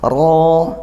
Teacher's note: Kasrah diikuti ya sukun panjangnya satu alif ro rnya tafkhim tebalkan pangkal lidah dinaikkan